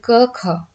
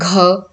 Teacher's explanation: इनका उच्चारण करते समय आपके कंठ से कंपन उत्पन्न नहीं होती · जब आप बोलेंगे घ, तो आप देखेंगे कि आपके कंठ में ऐसे कंपन सी महसूस हुई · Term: अघोष